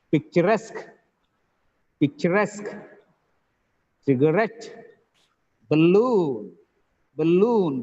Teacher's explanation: the last syllable is stressed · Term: last syllable stress